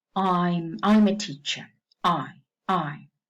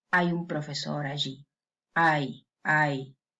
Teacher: the second element in Spanish we say is fully reached. The tongue reaches the position of the second element.